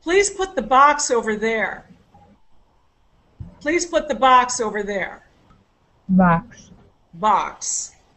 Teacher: normal stress the way we would normally say it uh with the the stress is the last content word of the sentence